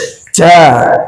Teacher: Jim kuat nempel ke langit, syiddah dia. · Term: huruf jim